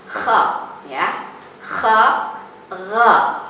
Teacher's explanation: Ghain dan Kha, tenggorokan bagian atas. Jadi dari tadi pengucapan H, kemudian kita ke ataskan Kha, ya, Kha, Ra.